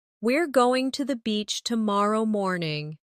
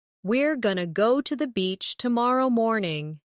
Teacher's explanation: Going to often becomes gonna in casual speech.